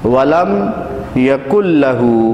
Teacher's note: نون ساکن کو ہم نہیں پڑھیں اور اس سے پہلے اور بعد والے حرف کو آپس میں ملا دیں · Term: ادغام